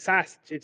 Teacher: You don't put the emphasis on the U like a New Yorker. You put the emphasis on the A like a true Chicagoan. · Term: Chicago accent